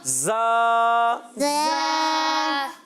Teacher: زا سیٹی کے ساتھ ادا ہوگا